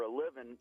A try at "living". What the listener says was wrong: What do you do for a living besides not pronounce your G's?